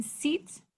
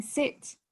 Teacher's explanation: the long e sound in seats with the short i sound in sit